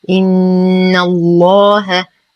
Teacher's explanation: نقف على الهاء بسكون عارض ولا صلة فيها حال الوقف، وأما إذا وصلنا فتصبح الهاء مكسورة وبعدها همز في الكلمة الثانية فتحتاج إلى صلة كبرى بمقدار 4 إلى 5 حركات فنقول بأمره إن. نشد النون بغنة أكمل ما تكون